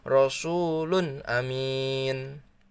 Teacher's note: tidak ada yang ditahan, jelas, tidak berdengung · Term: idhar